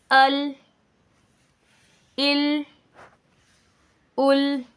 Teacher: लेते हैं लाम लाम लाम तो इसमें आप नोटिस कीजिए कि जब हम लाम को अदा कर रहे होते हैं तो हमारी जुबान का तरफ यानी ये नोक के साथ वाला किनारा जवाक से लेकर सनाया तक के दांतों के साथ लगता है